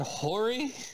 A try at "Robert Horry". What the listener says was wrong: Robert Horry. It has an H. It's Robert Horry.